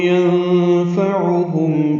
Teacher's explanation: ینفعہم نون ساکن کے بعد فا آنے کی وجہ سے اخفا ہے. عین وسط حلق سے ادا کریں گے اور معروف طریقے سے پڑھیں گے.